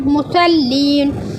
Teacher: स्वात हुरूफ़ मुस्तालिया है इसलिए होठों को गोल करके पढ़ा गया है।